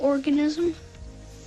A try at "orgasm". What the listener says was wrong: Pronounced orgasm, not organism.